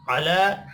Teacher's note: अला, अब यहाँ लाम के ऊपर छोटी मद है, 3 अलिफ के बराबर खींच कर पढ़ना है।